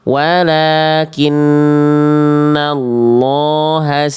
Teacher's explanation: Tambahkan di nun tasdidnya ditahan dua harakat ada gunah